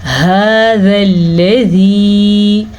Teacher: هذا الذی، ہا کے تلفظ کا دھیان رکھیں، ذال کو نرمی سے پڑھیں، لام کو پر نہیں پڑھنا اور لام پہ رکنا بھی نہیں ہے